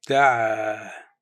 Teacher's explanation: pronounced دعا with a quick stop at the end